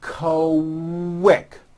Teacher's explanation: q sounds are made with the k sound and the w sound put together · the word quick is pronounced with a k and a strong w sound